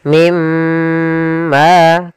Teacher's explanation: Kemudian di sini pada lafal mim marij ada bacaan idgham bi gunnah, yaitu ditandai dengan adanya nun sukun bertemu dengan huruf mim. Cara membacanya masukkan nunnya ke huruf mim dan kemudian ditahan dengan gunnah.